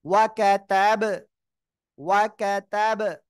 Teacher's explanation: এই যে বা সাকিন অবস্থায় আসছে, ধাক্কা দিয়ে পড়বেন। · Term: কলকলার অক্ষর